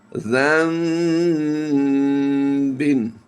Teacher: ذال نون زبر زن ہوتا ہے، لیکن جب بھی نون ساکن کے بعد حرف با آئے گا تو اب کیا کریں گے، ہم یہاں پر نون کی آواز کو میم سے کنورٹ کریں گے، اور یہ بن جائے گا ذنبن۔ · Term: اقلاب